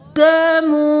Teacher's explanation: واو مدہ پڑھنا ہے، قدمو نہیں کرنا، ایک الف کے برابر کھینچیے